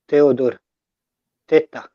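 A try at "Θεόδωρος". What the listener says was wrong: not exactly less T. Add less T to your mix and make it Theodore. Theodore. Yeah, th. Less T. less T in the mix.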